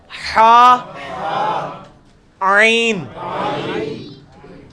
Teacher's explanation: وسط حلق سے نکلے گا حا, عین